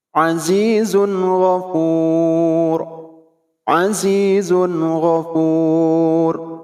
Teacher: Zun, tanwin menghadapi ghin, tidak boleh didengungkan. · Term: izhar